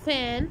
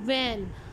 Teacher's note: And dental, dental is about teeth, तो using the lower lip and the upper teeth, for example फ sound in फैन and व sound in वैन। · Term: लेबियोडेंटल